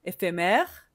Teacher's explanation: Je ne prononce pas le dernier E.